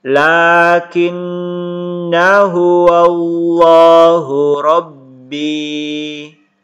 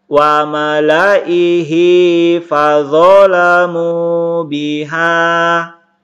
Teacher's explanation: huruf alifnya itu dihilangkan, dianggap tidak ada, dan dibaca pendek 1 harokat. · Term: tanda sifir